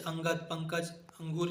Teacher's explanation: अनुस्वार अंग यह स्वर के बाद आने वाला व्यंजन है जिसकी ध्वनि नाक से निकलती है। उच्चारण नासिका से होता है।